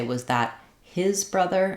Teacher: I would keep the H and I would use an unreleased T